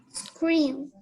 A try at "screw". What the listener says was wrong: Okay, check the pronunciation. The last letter is letter W. Screw is the correct way. Screw.